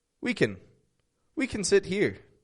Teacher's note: dropping that a from the word can